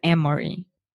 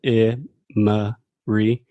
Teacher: technically this has the schwa sound in the middle